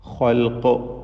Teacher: ഖാഇന് പൂർണ്ണമായ തഫ്ഖീമും ഖാഫിന് നിസ്ബിയായ ഏറ്റവും കുറഞ്ഞ തഫ്ഖീമുമാണ് കൊടുക്കുക. ഖാഫിന് കസ്റായതുകൊണ്ട്.